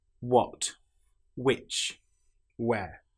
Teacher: In these cases, the H sound doesn't exist. Now, in some parts of England, they will say what, which, and where, but that's not common. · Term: W sound